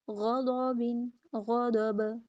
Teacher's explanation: با پہ کلکلا، غین اور ضاد کو پر